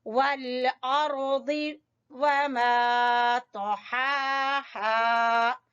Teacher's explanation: रा को भी पुर पढ़ेंगे और द्वाद को भी पुर पढ़ेंगे